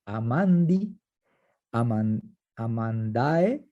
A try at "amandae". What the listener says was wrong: Amandae. Acuérdate que siempre el acento lo haces una sílaba antes. Amandae. Eso, amandi, amandae, amandi.